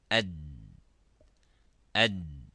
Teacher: And we can see that by, if we pronounce the dal, it stops completely. Ad, ad.